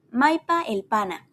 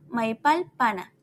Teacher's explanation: Si en la terminante el le sigue una palabra que termina con una vocal, la E se pierde y la L se une a la palabra que le precede.